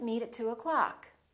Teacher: meet at two o'clock so don't say at and o clock reduce the o in the word o'clock